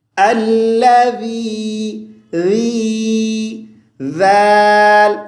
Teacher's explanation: اس پہ زبان کو باہر نکالیں گے، اوپر اور نیچے والے دانت آپس میں نہ ملیں